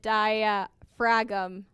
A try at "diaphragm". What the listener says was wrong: No, the G is silent.